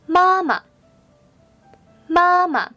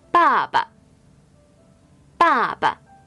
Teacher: The last one is a neutral tone, which is a toneless tone.It is pronounced very weakly and short.